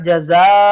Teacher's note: जज़ाउहु 1 अलिफ के बराबर उल्टा करके खींचना है, और यहाँ पर जज़ाउह करेंगे, वाक़फ़ की सूरत में हा को साकिन करेंगे।